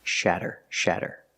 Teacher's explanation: we see the fast D sound again, with a double T making the fast D sound